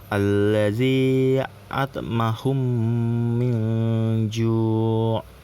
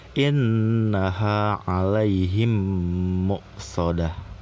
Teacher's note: ada huruf mim sukun, nah huruf selanjutnya itu adalah huruf mim tapi mimnya hidup, maka dibacanya itu seperti mim bertasdid. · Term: idgham mimi